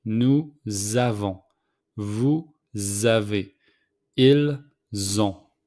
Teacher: So, with the 3 pronouns plural, we make the liaison between nous and avons. So the S became a Z.